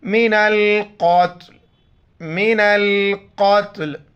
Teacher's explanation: قتل تو کی وجہ سے وقف ہو رہا ہے تو اس کا زیر نہیں پڑھیں گے، قتل پڑھیں گے۔ · قوف نقطہ والا ہے، بڑی قوف ہے، موٹا کر کے پڑھیں گے، تا کے ساتھ ملائیں گے۔